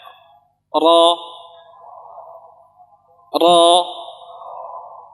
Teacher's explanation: dari ujung apa? Lidah, dan sedikit dari punggungnya kita letakkan di ujung langit-langit di atas gusi. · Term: sifat takrir